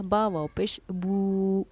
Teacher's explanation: یہاں واو ساکن سے پہلے کیونکہ پیش ہے تو اس کو ہم 1 الف کی برابر کھینچ کر پڑھیں گے، یہ واو ساکن سے پہلے جب پیش ہو تو وہ حروف مدہ بن جاتی ہے، اسی لیے ہم نے اس کو پڑھا با واو پیش بو۔